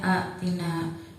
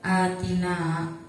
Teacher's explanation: Karena badal artinya pengganti, maka hamzah yang mati diganti menjadi mad yang sesuai dengan harokat sebelumnya. Karena harokat sebelumnya berharokat fathah dan hamzah yang mati diganti menjadi mad alif dan dibaca panjang. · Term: mad badal